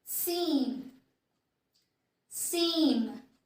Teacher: The difference is that when we spell P and B, we release air out of our mouth. But when we spell M, we force the air to get released through our nose, through our nasals.